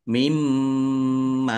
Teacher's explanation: [Musik] Mariadzium [Musik] waulu lamah wau sukun mad thobi'i panjang dua harakat mimma ini harusnya min dan ma min nun nun sukunnya disembunyikan atau mustatir sehingga ini nun sukun bertemu dengan huruf mim bacaan idgham masuk dengan mendengung · nun sukun bertemu dengan huruf mim, bacaan idgham bi gunnah, masuk dengan mendengung, yaitu mendengung mim. Ditandai mimnya ada tasdidnya, dibaca mendengung, ditahan biar tampak mendengungnya.